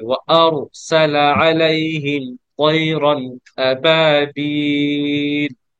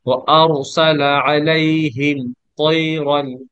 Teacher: আরো যখন বলবো মুখটা গোল হয়ে যাবে, মানে ছড়ানো থাকবে না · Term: মুখ গোল